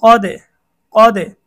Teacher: এখানে দালের মধ্যে জজম হয়েছে, দাল হচ্ছে কলকলার 5 হরফের একটি হরফ, কলকলা করে পড়তে হবে।